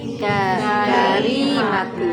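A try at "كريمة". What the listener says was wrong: Yang panjang. Yang panjang rinya. Karimatu. Karimatu. Jadi ada panjang huruf pertama, ada yang panjang huruf kedua.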